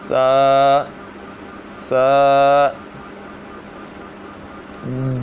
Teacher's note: سا جو ہے یہ زبان کا سرا اور اوپر کے دانتوں کے اندرونی کنارے سے ادا ہوتا ہے. اس کو جب پڑھنا ہے تو سیٹی کی آواز نہیں آنی چاہیے، بلکہ اس کو اس طرح پڑھا جائے.